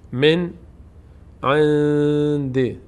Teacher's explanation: اینجا نون ساکن بعدش حروف حلقی هست عین اینجا قاعده اظهار صورت می‌گیر · اینجا نون قاعده اخفا صورت می‌گیره چون بعدش دال